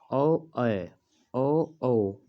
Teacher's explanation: कंठ और ओष्ठ दोनों मिलाकर इसका उच्चारण होता है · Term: कंठ होस वर्ण